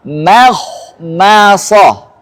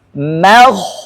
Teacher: Harus makhmasah. Ah, mimnya tipis, mim ini tipis. Apalagi ini berdampingan diapit dua isti'la. Ah, harus lebih jelas bahwa dia tipis. Makhmasah. Ah. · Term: mim tarqiq